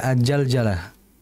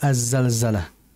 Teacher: huruf yang keluar dari lidah bagian ujung menempel dengan gigi seri bagian bawah dan memiliki sifatofir yaitu sifat yang seperti ada suara siulan yang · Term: huruf Za